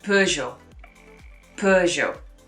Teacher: in french the g is actually a j sound